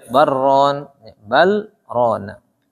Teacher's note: Bal ra ada lam ketemu ra. Lam ketemu ra itu idgham.